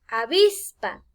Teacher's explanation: avispa lleva el acento en la penúltima